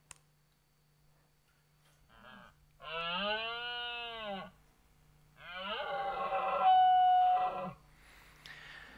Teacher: an example of a nasal grunt at the beginning followed by a modal phonation which is kind of normal voice for a deer followed by a chaos